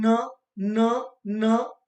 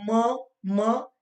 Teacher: हवा को ऊपर की ओर वो दबाव डालकर ऊपर की ओर भेजती है और नाक से हवा निकलती है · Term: नासिक ध्वनियां